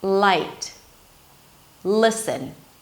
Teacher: It feels like that in addition to bringing the tip of the tongue up and pushing the air out to pass between the sides of the tongue, I'm also engaging the back of the tongue. It feels like as if I'm pushing the tongue forward, and adding some tension here.